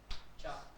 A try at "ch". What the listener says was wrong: No, ch is not cha. What is the sound of ch? Kh. It is kh. Kh sound. Ch will be kh, but ch is also sh. This sound, sh, not required. ch से पहले अगर आपको a, o और u आए, then it is kh. Otherwise, it is always sh.